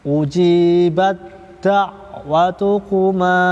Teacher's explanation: Huruf dal ya. Ta sama da juga sama makhrajnya. Ini punggung ujung lidah bertemu dengan dua gigi seri muka bagian dalam.